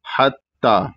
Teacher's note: حتی، حتی میں بڑا ہا ہے، اس کے بعد تا مشددہ ہے جو کہ پتلا پڑھا جائے گا اور تا کے اوپر کھڑا زبر ہے تو اس کو صرف ایک الف کے برابر کھینچنا ہے